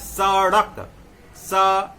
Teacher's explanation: जीभ ऊपर जाएगा, मूर्धा में सटेगा और नीचे आ जाएगा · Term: उच्छिप्त